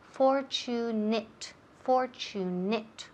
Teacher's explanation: la terminación termina en ATE, pero se pronuncia como si fuera it